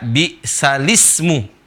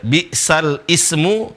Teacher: Bisa dilihat di sini alif tidak dibaca. Seharusnya lamnya yang mati menjadi hidup. Dibacanya bi'salismu. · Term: an-nakal